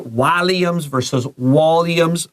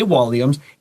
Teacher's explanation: it's just a vowel difference. That short A and that schwa sound in England and America are a little different. So you're going to see whoever is saying it will say it a little bit different.